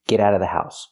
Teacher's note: you don't have to pronounce the vv sound in of because it's before a consonant